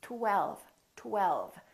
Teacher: first there was a tongue touching behind my upper teeth and then we round our lips for the W and then the tongue goes up again for the L LL · And then the tongue goes up again for the L, l, l. And then the lower lip touches the upper teeth for the V